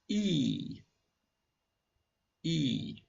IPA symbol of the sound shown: i: